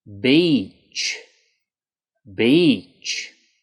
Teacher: make sure in this word that you really lengthen that E sound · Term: long E